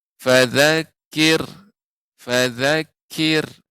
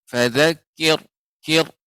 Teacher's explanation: ketika ra yang sukun sebelumnya kasrah. Ra sukun sebelumnya kasrah, maka dibaca dengan tipis, ya. Contohnya, ya, fadzakir, fadzakir, ya, dibaca dengan tipis.